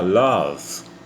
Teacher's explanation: E o O, ele é uma semivogal que vai quase para o A